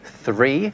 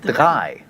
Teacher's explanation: where English developed a th sound in certain words, German went off in a slightly different direction and ended up with a d sound instead. So where English has 3, German has drei.